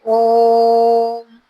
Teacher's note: प्लुत स्वर में तिगुना टाइम लेते हैं